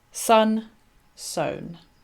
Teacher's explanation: So you can see that the consonant sounds are the same, S and N, sun and sown, but there is no assonance, there is no rhyme in the vowel sound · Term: pararhyme